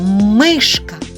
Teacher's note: який звук чуємо перший звук м який він приголосний твердий